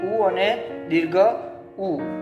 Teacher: એના પછી છે ઓષ્ઠ્ય. ઓષ્ઠ્ય એટલે હોઠની મદદથી ઉ અને દીર્ઘ ઉ